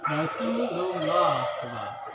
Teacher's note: lam pada kata Allah dibaca tebal